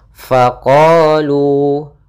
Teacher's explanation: ada Mad thi'i yaitu fathah bertemu Alif maka panjangnya dua harakat